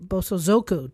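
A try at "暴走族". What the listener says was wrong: Your inflection was all wrong.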